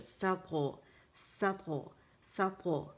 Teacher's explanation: پھر جبڑا کھلا ہے اور طا موٹی ہے، تو کھلے منہ کے ساتھ ہم نے یہ قلقلہ کرنا ہے